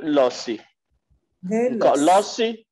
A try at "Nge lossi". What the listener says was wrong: Il faut mettre le coup de glotte. Ce n'est pas lossi, c'est la. Nge lossi.